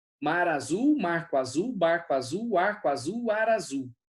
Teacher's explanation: o R e o A do azul, eles estão se ligando quando a gente fala isso muito rápido